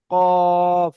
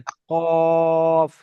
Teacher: একদম জীবের গোড়া থেকে উচ্চারণ